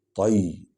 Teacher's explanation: طی، کیونکہ طا کو موٹا کریں گے